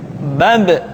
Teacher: Ketika mati, maka terdengar suara pantulan.